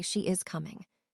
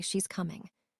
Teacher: Natives say she's coming. The auxiliary verb is becomes just an s sound attached to she.